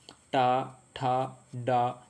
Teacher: अगला क्वेश्चन है कि ट वर्ग की ध्वनियां है। तो ट वर्ग की जो ध्वनियां होती है ना उसको मूर्धन्य कहते हैं। यानी कि मूर्धा से टच होती है। देखो इसको मैं थोड़ा आपको एक्सप्लेन कर सकता हूं।